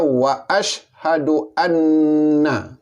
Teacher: Maka bunyi an ini fathah oleh kerana nunnya bersabdu. Maka bunyi an ini datanglah hukum atau perintah wajib al-ghunah. Wajib didengungkan. Maka dengungnya 2 harakat.